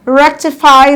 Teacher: Rectify, the rec, received the louder stress.